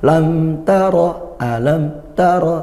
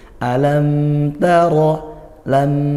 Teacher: aliran suaranya pertengahan tawasut atau bainiah jadi tidak melepas sampai lepas